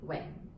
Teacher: the Wing, okay, is the low falling Wing